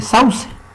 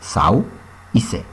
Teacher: Sauce se divide en dos sílabas, sau y se. Noten que en la sílaba sau hay un diptongo. La primera abierta, la segunda vocal cerrada.